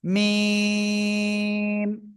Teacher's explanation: এই যে অক্ষরটা দুই ঠোঁটের শুকনো জায়গা থেকে আমরা উচ্চারণ করব